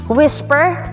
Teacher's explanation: the most commonly used pronunciation is whisper with silent h